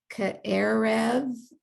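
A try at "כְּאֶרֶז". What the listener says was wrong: Yes, it's a Zion. Ke'erez, like a Z.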